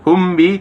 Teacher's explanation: Pada lafaz humbi terdapat ikhfa safawi karena min sukun bertemu huruf ba. Cara membacanya didengungkan antara 2 sampai 3 harakat.